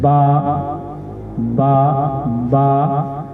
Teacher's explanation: होंठों का अंदरूनी तरी वाला हिस्सा जब आपस में मिलता है तो बा अदा होता है। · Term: हरूफे शफविया